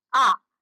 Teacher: यह वे स्वर जिनका उच्चारण करते समय ओष्ठ फैल जाते हैं। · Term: अवृत्ताकार